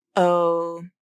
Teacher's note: the stop te is made with the vocal cords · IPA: /ʔ/